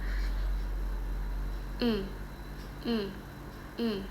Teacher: Nah, seperti ee ini vokalnya I. Lidahnya itu naik tinggi ke depan. · Lidahnya itu naik tinggi ke depan. Tapi nggak nyentuh gigi ya, tapi dia itu ke atas. Betul. Nah, mulutnya itu semi tertutup posisinya. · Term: vokal tinggi atas depan